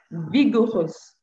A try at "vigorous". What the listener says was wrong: No, vigorous. No, not even rus. My problem is now with the O. Vigor, not vigo. Vigorous.